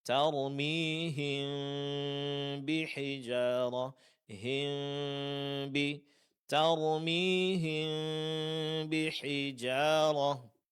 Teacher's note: Dalam ilmu tajwid disebut dengan ikhfa syafawi yang praktiknya persis seperti iqlab, yaitu dengungkan mim sukun dan samarkan bunyi mim sukun dengan sedikit memberikan renggang antara kedua bibir